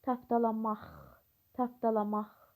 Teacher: taptalamaq sözündə q samiti x samitinə keçir